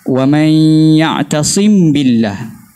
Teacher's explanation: dia izharkan mim dan dia tidak memanjangkan gunnah, dia ikhfakan gunnah tu, dia tidak memanjangkan gunnah.